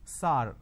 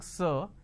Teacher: Majority of the people pronounce the word sir as sar.